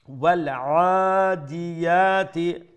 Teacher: ain from the middle of the throat, standing fatha, one alif long